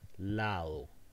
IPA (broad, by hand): ˈlaðo